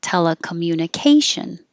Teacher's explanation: the te is secondary stress so it'll get a little longer and you should be able to hear the vowel but k is the primary stress so it'll be higher and longer